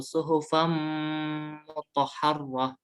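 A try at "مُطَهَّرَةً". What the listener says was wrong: Lagi mutahharah. Jadi roknya biasa, tidak tanpa tasdid. Dan tasdid justru hanya mutahharah. Ya, mutahharah gitu.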